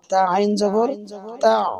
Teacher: গলার ভিতরে আইনের আওয়াজ যাবে।